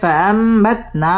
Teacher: ফাআম এটা হচ্ছে ইকলাব, এই নুনটাকে মিম দ্বারা পরিবর্তন করে গুন্নাহ করে পড়তে হবে।